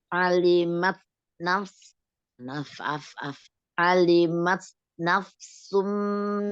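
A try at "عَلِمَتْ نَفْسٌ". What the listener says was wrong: jangan buru-buru. Nggak boleh buru-buru fa-nya.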